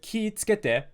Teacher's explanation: the ki would be stretched out to 2 moras and it would be all flat, it'd be heibon.